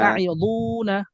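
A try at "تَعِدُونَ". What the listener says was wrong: আবার আইতে টান হয়ে গেছে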